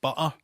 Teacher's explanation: people in Glasgow get a lot of hassle for using the glottal stop